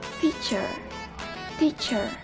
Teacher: Disimbolkan dengan huruf T, dan konsonan ini masuk ke dalam alveolar, plosive, dan juga voiceless sound.